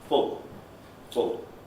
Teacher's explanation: at the end, in the coda position, we have dark L